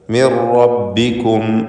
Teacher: മിർ എന്നിങ്ങനെ വിറപ്പിച്ച് പറയരുത്, ഒറ്റ റ മാത്രം ഉച്ചരിക്കുക.